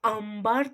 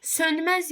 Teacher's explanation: İkisində də b-dan və m-dan öncə gələndə m kimi tələffüz olunur.